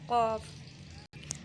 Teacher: قاف زبان کی جڑ اور تالو کے نرم حصے سے ادا ہوتا ہے